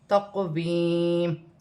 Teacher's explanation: قاف ساکن ہے، موٹا حرف ہے، قلقلہ والا حرف ہے، قلقلے کے ساتھ ادا کیا جائے گا اور یا ساکن سے پہلے زیر ہے تو یا مدہ بنے گی۔